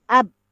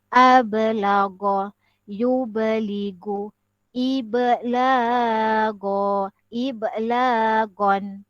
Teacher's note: Untuk huruf ba, oleh kerana dia huruf qalqalah, maka dia dikatakan lantun. Ab, dia dikasih lantun balik.